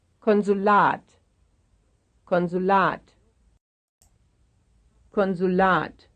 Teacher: here is a three-syllable word with stress on the last syllable